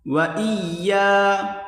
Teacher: حمزہ کو یا کے ساتھ ملا کر پڑھیں گے سختی کے ساتھ